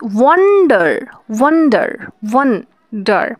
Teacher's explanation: আবার দেখো ওয়ান্ডার, এখানে ওয়ান হচ্ছে স্ট্রেসড এবং ডার হচ্ছে আনস্ট্রেসড, অর্থাৎ ওয়ান্ডার, ওয়ান্ডার, ওয়ান্ডার। আমরা এখানে ওনের ওপরে চাপ বেশি দিচ্ছি